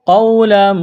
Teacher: وَقُولُوا لَهُمْ قَوْلًا، قاف واو زبر قو، قاف کو موٹا کرنا ہے، واو ساکن سے پہلے زبر، واو لین بغیر کھینچ کے پڑھنا ہے